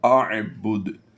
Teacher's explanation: یاد رہے آپ کو یہ دال پر پیش نظر آ رہی ہے، لیکن ہم نے وقف کی صورت میں اس دال کو پیش کے ساتھ نہیں پڑھا، بلکہ دال کو با کے ساتھ با دال پیش بدھ پڑھ دیا، اعبد، یعنی پیش کو ہم نے کیا کیا، جزم سے کنورٹ کیا ہے، اعبد۔